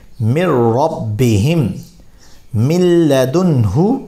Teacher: را اور لام میں بغیر گنہ کے کیا ہوگا؟ ادغام ہوگا۔ تو یہاں پر ہم اس کو من ربک پڑھیں گے۔